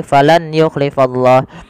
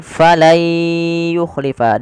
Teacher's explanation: Maka cara membacanya bukan lagi falan yukhlifallah, tapi menjadi falai yukhlifa, diganti suara nunnya menjadi suara ya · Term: idgham